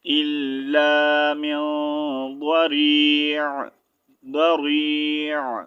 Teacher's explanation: stop کی صورت میں عین کی ہلکی سی آواز آنی چاہیے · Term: عین کی آواز